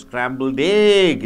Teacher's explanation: egg should be stressed